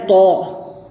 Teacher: जबान का किनारा ऊपर के दांतों के किनारे पर लगाया जाए और मोटी आवाज करके पढ़ा जाए